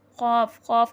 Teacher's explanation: یہ زبان کی جڑ جو اقصۃ اللسان ہے، جو ہمارے زبان کا آخری حصہ ہے، یہ وہاں سے ادا ہوتا ہے اور تالو کے نرم حصے سے ادا ہوتا ہے۔ زبان کی جڑ اقصۃ اللسان اور تالو کے نرم حصے سے قاف ادا ہوتا ہے۔